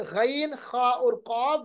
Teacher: फिर गैन, खा और काफ जो है, उनको अदा करते वक्त दरमियानी हिस्सा ऊपर की तरफ नहीं उठता, बल्कि जबान का आखिरी हिस्सा ऊपर की तरफ उठ जाता है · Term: हरूफ मुस्तालिया